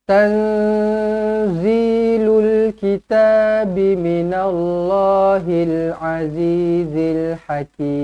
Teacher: nun kosong bertemu dengan zai, ikhfa, hakiki, dengungkan 2 harakat